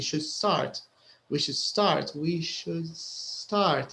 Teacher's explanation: It's like you're jumping from should start. The D is very light, almost silent.